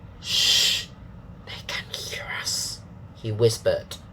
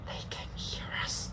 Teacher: So that's using breath only, no voice.